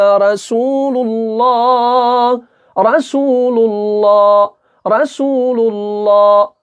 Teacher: لا لا باریک نہیں پڑھنا بلکہ پر پڑھنا ہے